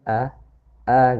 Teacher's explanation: fathahnya orang Arab itu fathahnya tengah-tengah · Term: fathahnya Arabi